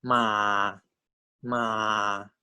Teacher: the low tone begins at two and goes down to one